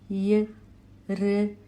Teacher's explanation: The second sound is ra plus a giving ra as in rip in English. It is a murdhanya or a cerebral sound since the air reflects off the roof of the mouth. · It is a talavya or a palatal sound since the air reflects off the palate.